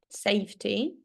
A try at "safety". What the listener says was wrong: Yes, I think you read it like safely or something.